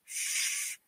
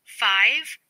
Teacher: The f is a voiceless fricative consonant. The sound for F is f, as in the beginning of 5 and the end of off. · Significant friction is created as the air in the mouth is partially obstructed and forced through a narrow space. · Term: fricatives